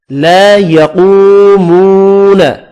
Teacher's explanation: ایک الف مدہ ہے اور دو واو مدہ، تینوں کو ایک ایک الف کی مقدار میں کھینچ کر پڑھیں گے